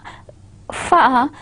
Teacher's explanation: I am using my lip and I am touching it with my upper teeth line, fa. So such sounds are known as labiodentals.